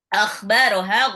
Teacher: Akhbaraha kha-nya ngorok. Dia tenggorokan bagian atas.